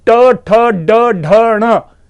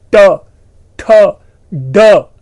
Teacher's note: जीभ मुड़ करके ऊपर के एक पोर्शन है जो कठोर तालु और कोमल तालु के मध्य हिट कर रहा है।